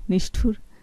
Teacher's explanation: ঠটা মূর্ধন্য ধ্বনি, মূর্ধন্য স হয়েছে